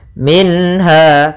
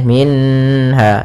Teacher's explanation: Ha termasuk huruf halq, yaitu huruf yang kita keluarkan dari tenggorokan, maka harus jelas suara nunnya, tidak boleh tahan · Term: izhar halqi